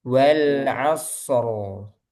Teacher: meskipun sukun jadi tetap ada alirannya sedikit ada bainiahnya. Contohnya wal asro jadi ro gitu ya.